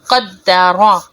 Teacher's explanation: را زبر را قدرا، یہاں پر قاف اور را کو موٹا پڑا جائے گا